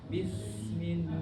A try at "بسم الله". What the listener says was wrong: Ya, bukan bis. Bis. Itu ujung lidahnya nggak pas. Bis. Tapi taknya itu nggak di ujung gigi. Itu huruf sin.